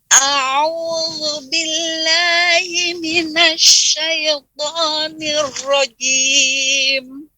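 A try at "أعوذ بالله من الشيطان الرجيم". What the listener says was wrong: banyak suara hidung ya hati-hati jangan sesuai hidung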